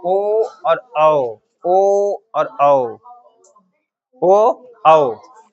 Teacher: कंठोस यानी कंठ और ओष्ठ से प्रयोग किया जाएगा। ओ और औ ओ और औ ओ औ ओ को धीरे बोलते हैं।